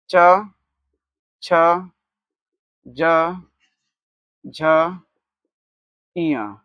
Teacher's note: तो च वर्ग का उच्चारण स्थान क्या हो जाएगा आपका? तालु।